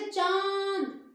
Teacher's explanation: मुंह आपका खुला है, नाक से भी हवा निकल रही है, मुंह से भी निकल रही है, तो चंद्र बिंदु का प्रयोग करना है।